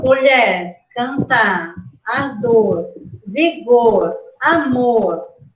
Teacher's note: o acento fônico né dela fica no final na última sílaba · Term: oxítonas